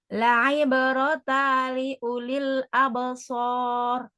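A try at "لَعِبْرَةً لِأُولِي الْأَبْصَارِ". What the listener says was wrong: Nah, yang di lamnya pun ada tasdidnya ya. Di sini kurang. La ibratan li.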